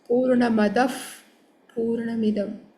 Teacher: if visarga is followed by pa and fa, then visarga should be pronounced as a double fa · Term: double fakar